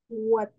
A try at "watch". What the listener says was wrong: Watch. Watch. Es el sonido CH.